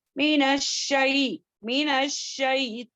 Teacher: और मीनश, मीनश यानी के शीन में तफशी, यानी कि अच्छे से स्प्रेड करते हुए पढ़ेंगे